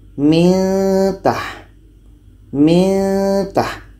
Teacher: Ketika sebut huruf nun, kita sudah merasakan huruf ta. Karena makhraj nun dengan ta ini dekat, maka ketika kita merasakan huruf ta itu, kita akan mudah.